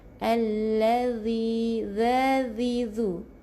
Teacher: bukan huruf z huruf zal, lidah kena ke depan sikit keluarkan lidah, kedua gigi renggangkan supaya ada ada hamas, ada bunyi angin jangan allazi.